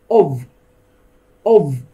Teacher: كلمة off وكلمة off باللفظ هذه الاولى اللي بيها الف وحدة لما تصير بالجملة ما بين الكلمات تقرأ of of تتحول الاف الى v sound